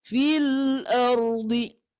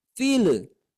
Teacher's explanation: sifat lam ini mempunyai sifat inhiraf. Inhiraf itu menyimpangkan suara